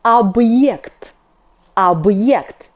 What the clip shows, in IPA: abye'kt